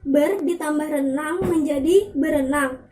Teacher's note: maka bunyi R yang ada pada prefiks ber dilesapkan. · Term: pelesapan fonem